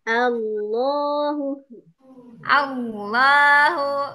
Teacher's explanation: kalimat jalalah ini sebelumnya ada harakat fathah maka Allahnya kita baca tebal